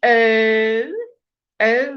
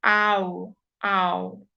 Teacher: So O is slightly more closed mouth. Ow is more open.